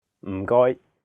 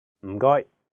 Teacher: The first character is in a very low tone, fourth tone.